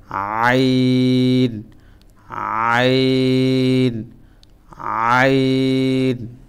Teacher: গলার মাঝখান থেকে, এই যে এটা খুব সফটভাবে উচ্চারণ হবে